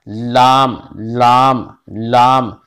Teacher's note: कनारा जबान का कनारा मसूड़े से मिलाकर लाम अदा होता है